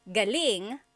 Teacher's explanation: So if the emphasis is on the second syllable, galing, that means good or great or excellent.